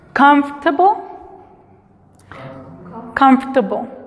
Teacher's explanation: La O casi no suena. Es más como un espacio entre la F y la R.